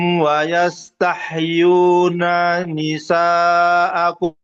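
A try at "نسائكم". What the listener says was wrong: Nanya pendek.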